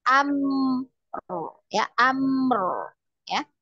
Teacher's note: Dialirkan. Mim dialirkan ya, ada tawasudnya.